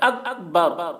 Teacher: کاف میں کلکلہ نہیں ہونا چاہیے